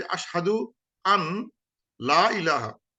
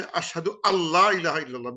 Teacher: because nun sakin lam, it idgham happens, then nun drops, nun goes away